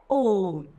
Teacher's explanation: प्लुप्त स्वर का उदाहरण है ओम, जिसमें हमें थोड़ा सा लंबा समय लगता है।